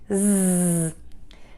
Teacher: Keep the air moving out of your mouth for the Z. Make sure that your voice box is on and moving and vibrating for that Z sound.